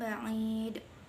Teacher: bacaan qalqalah kubra sebab huruf dal matinya karena waqaf